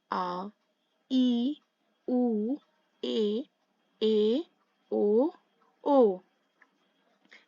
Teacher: वो स्वर जिनका उच्चारण करते समय हस्र स्वरों से लगभग दो गुना समय लगे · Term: दीर्घ स्वर